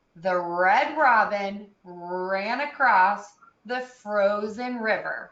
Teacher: want to hear those r's a little bit longer